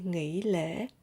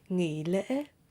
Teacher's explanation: But in Southern accent, the tones hỏi and ngã are the same.